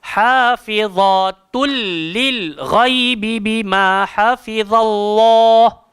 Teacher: Tanwin bertemu lam sampai bila-bila tak akan pernah dengung pasal hukum dia idgham bila gunnah. Jadi bunyi dia hafizatul lil ghaibi bima hafizallah.